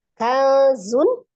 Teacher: Kazun, ada nun sukun, ketemu dengan huruf zai, di situ letak ikhfa-nya tadi ya, ikhfa ausat, ikhfa hakiki ausat, nun sukun ketemu dengan zai, dibacanya samar